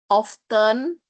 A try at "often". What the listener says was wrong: You shouldn't say often. Often without T. No, again, often without T. The pronunciation is often without T.